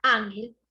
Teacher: es una palabra grave porque tiene el acento en la penúltima sílaba